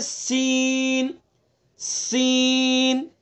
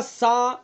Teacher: سین کو ادا کرتے وقت اس کے اندر صفت صفیر ہے، سیٹی کی آواز نکالیں گے، سا کے اندر نہیں